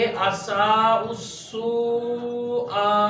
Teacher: हमजा अदा होता है हलक से